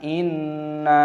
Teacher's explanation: Kita menggunakan ghunnah di sini, kita melafalkannya dengan sengau. · nunnya berharokat tasydid, ini kita gunnahkan, kita dengungkan